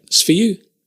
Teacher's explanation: the you is stressed